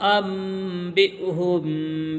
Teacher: جب چھوٹا میم آتا ہے تو اس کو ملا کر کے پڑھتے ہیں، یعنی حمزہ کو میم میں ملائیں گے اور نون سائلنٹ ہو جائے گا، تو ان نہیں پڑھیں گے، ام پڑھیں گے